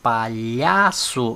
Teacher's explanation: Vejam que o lhá é lido com mais força, então a sílaba tônica é o lhá